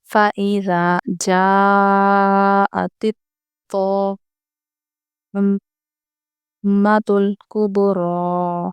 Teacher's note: تا باریک پڑھیں گے اور تو کو ہم موٹا پڑھیں گے